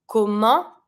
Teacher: This one, careful. ENT, on sound, don't pronounce the T.